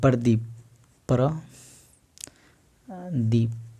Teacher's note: प हाफ होता है और र का उच्चारण फुल्ली आ जाता है। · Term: अंत्य अस्त व्यंजन